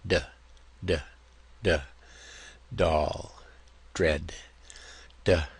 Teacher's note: So, the voiced version is going to be putting that tongue against that ridge, stopping the sound momentarily, and then letting it loose